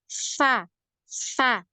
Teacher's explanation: di punggung ujung lidah nempel di ujung gigi seri atas